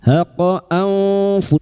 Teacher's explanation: Nun sukun bertemu fa ikfa hakiki. Kita samarkan bunyi nun sukun dan mendengung selama 3 harakat